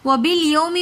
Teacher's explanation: وَبِالْيَوْمِ میں واو لین ہے. واو ساکن اور سے پہلے زبر ہو تو وہ واو لین کہلاتی ہے جس کو ہم بالکل بھی نہیں کھینچتے